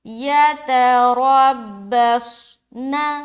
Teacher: را کو بھی ہم موٹا رکھیں گے کیونکہ اس کے اوپر زبر ہے